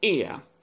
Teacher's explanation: the first sound is longer and louder and the second sound is shorter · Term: diphthong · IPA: /ɪə/